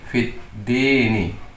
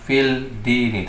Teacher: lam ta'rif bertemu dengan huruf dal menjadi hukum syamsiah juga, sehingga hukum bacaannya menjadi idgham. Membacanya menjadi fit dini.